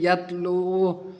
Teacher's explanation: واو مدہ ہے، تھوڑا کھینچیں گے